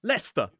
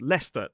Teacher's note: It totally looks like cester but it is /stə/, with a schwa.